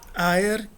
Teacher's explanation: O e é longo no nominativo singular